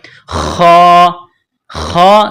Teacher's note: خا کو موٹا کرنا ہے، جس طرح انسان گلے سے بلغم نکالتا ہے اسی طرح خا کو نکالیں گے